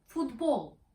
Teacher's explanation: there is no prominence on the first syllable the tone is level but the length of the original english vowel in the second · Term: word stress